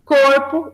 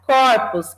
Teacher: Além desse acréscimo do S, há uma mudança em relação à pronúncia. Corpo, o primeiro O é fechado, né? Quando a gente vai para corpos, é aberto, ou seja, tanto essa abertura da vogal quanto o acréscimo do S marcam o plural, são duas marcas de plural.